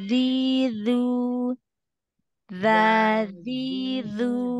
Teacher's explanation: fokuskan dia dari ujung lidah yang ditempelkan dengan gigi seri atasnya